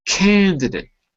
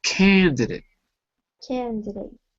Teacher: we don't say date because date is not the stressed syllable so we don't actually say the a